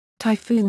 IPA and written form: taɪˈfuːn (typhoon)